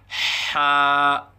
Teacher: پہلی تختی کا چھٹا سبق حرف حا کے متعلق ہے۔ حرف ہے حا، مخرج حا وسط حلق سے ادا ہوتا ہے، یعنی حلق کے درمیان سے حا ادا ہوتا ہے۔